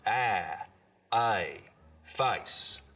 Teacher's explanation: the diphthong in face starts real low down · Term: face lowering